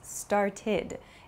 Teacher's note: It has an ID sound. It's not an ED sound, but an ID sound.